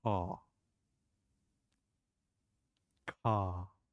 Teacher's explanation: For example, in the word C-A-R, you drop R and you say car. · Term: the dropped R